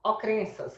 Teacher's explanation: Agora, eu tenho o N e o C cedilha na escrita, mas eu não tenho na fonética. Ele some porque o E fica nasalizado.